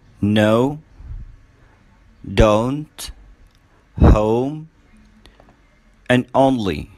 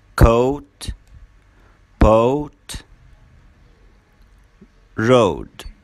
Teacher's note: In pronouncing the sound O as in poet, the lips are very rounded and tense. The tongue is a bit tense and it moves from a mid position to a high position.